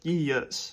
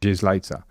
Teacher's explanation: Frank Lampard says it more like yes, with a single vowel sound. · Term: diphthong smoothing